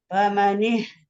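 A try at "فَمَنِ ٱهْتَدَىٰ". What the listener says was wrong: Rendah lagi boleh? Rendah lagi famani tu.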